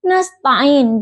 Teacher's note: Kata nastain, huruf sin yang makhrajnya itu di ujung lidah dan gigi seri bawah